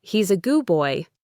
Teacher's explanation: Often sounds like he's a goo boy. The D is very weak or gone completely.